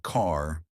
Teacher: Unlike British English, Americans love their R sounds, but they pronounce them softly. Car sounds like car, not ca. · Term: soft R sound